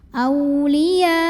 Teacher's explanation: boleh 4 boleh 5 harokat tidak boleh dua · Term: mad wajib muttasil